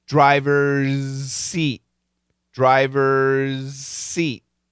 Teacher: a lot more s than there is z and I like to tell you 2080 20% Z 80% s